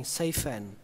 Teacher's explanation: Chỗ thứ ba các bạn có thể nối là chữ safe với and thành safe and